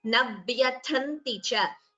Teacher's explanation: Tha is Mahaprana here. The second ta is Alpaprana.